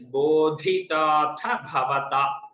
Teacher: there is dhakara mahaprana followed by dhakara alpaprana, then tha and bha, two mahapranas . So it is a little difficult to pronounce when